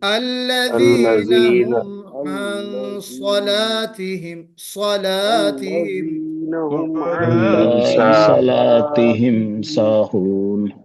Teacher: صاد کو موٹا پڑھیں گے مگر لام کو باریک پڑھیں گے.